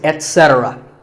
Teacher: remember that the stress is on se